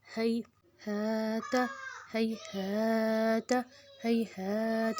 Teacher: زیتون، ہیہات، ہیہات، ہیہات، اس میں بھی وہیں پہ جزم ہے، پیچھے زبر ہے، تو ہم اس کو نہیں کھینچیں گے۔ اور ہا کے اوپر زبر ہے، آگے الف ہے، الف پہ کچھ بھی نہیں ہے، تو یہ الف مدہ 2 حرکت لفظ کو کھینچیں گے۔